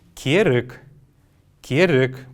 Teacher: После буквы «р» есть неясный звук.